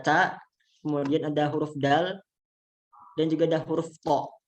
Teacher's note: Yaitu yang pertama adalah yang menyentuh gusi 2 seri atas, yaitu ujung lidah itu menyentuh gusi ya, gusi lidah bagian atas